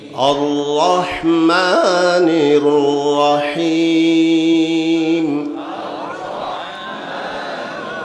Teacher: এক আলিফ মানে দুই হরকত দুই হরকত পরিমাণ টেনে আদায় করতে হবে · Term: এক আলিফ মদ